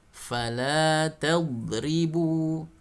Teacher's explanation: Tadribu jangan dibaca memantul ketika dhad sukun · huruf dhad dia punya sifat memanjang suaranya di seluruh sisi lidah, ya, atau dikenal dengan sifat istitalah, ya.